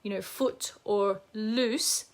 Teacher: They are so far back, the tongue is very back in the mouth, and the pharynx may already be quite narrow because of the tongue tie.